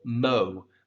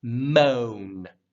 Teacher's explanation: moan or anything like that [Music] it's one syllable mo but you want to make sure it has a roundedness to it mo before you draw down to that n